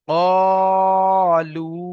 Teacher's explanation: ওয়াও সাকিন তার ডান দিকে পেশ এসছে, ওয়াও মাদ্দা, ওয়াও মাদ্দাকে এক আলিফ পরিমাণ টান দিয়ে পড়তে হবে।